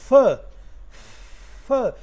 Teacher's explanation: there is no total closure in the oral passage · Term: fricative